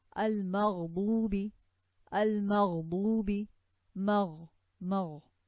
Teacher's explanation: Ghain, not a letter of hams. There's no air, but the sound will run.